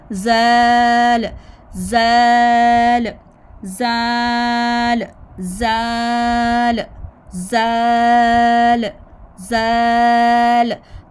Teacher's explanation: तो इसका तरीका आपने क्या करना है कि आपने आईने के सामने खड़े होकर तो आपने अपनी टंग को देखना है कि हमारी जो टंग है वो ऊपर फ्रंट टीथ के साथ लग के थोड़ी सी बाहर निकल रही है, ठीक है। थोड़ी सी बाहर निकालेंगे तो इसका निकालना बहुत ज़रूरी है।